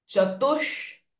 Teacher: Visarga sound H will change to Sh. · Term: retroflex sh sound